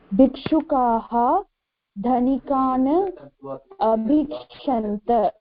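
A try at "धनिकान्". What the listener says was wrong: Dhanikan. It's not Dhanikana, it is Dhanikan. There's a halant there, okay? Dhanikan.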